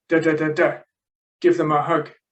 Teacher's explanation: You've got, as I say, you've got the main verb give, and then a function word, them, object pronoun, and then another function word, the indefinite article, and then another content word, hug, the noun. Typically, content words like give and hug get their full value in speech. They're stressed